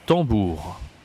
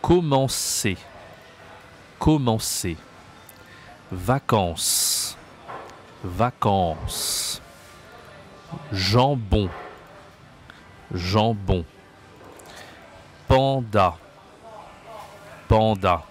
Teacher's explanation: Tous ces mots-là que tu viens de voir utilisent la nasale en.